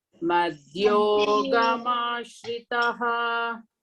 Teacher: madhyogama, ma, you got that longer vowel, no? A bar upon a. That means you have to elongate there, not ga.